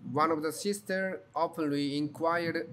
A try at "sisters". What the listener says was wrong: Sisters with S. You only say sister. sisters.